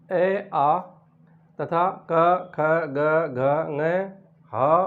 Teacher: कंठ से बोलने वाले हैं ए आ तथा क ख ग घ ङ ह वर्ण और विसर्ग